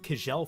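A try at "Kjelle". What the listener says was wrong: Her name is pronounced Shelley. I learned that whether I wanted to or not, it's Scandinavian. The KJ is a sh sound.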